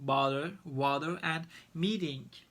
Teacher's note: It writes with T, but we pronounce as a hard D.